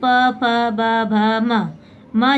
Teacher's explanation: दोनों होंठ जो है हमारे आपस में चिपकते और खुलते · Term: ओष्ठ ध्वनि